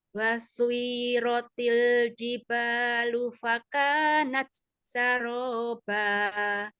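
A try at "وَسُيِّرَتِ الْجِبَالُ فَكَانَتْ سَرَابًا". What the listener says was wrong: Wasuyiroti. Rohnya kayaknya kurang jelas Coba.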